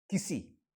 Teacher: The first E is small and the last E is long